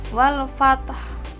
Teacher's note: Kemudian selanjutnya, bila wakof suara fat di sini ditekan dan diikuti bunyi ha mati dengan suara rendah